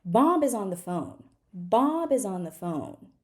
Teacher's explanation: I go up for every word that I stress. I don't go all the way up all the time, okay?